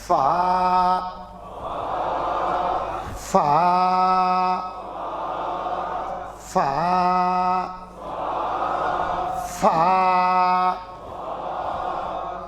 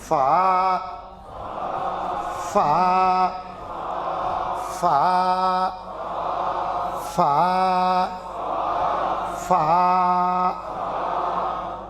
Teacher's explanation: ऊपर के दात नीचे होठ से पहले मिलाना फिर खोलना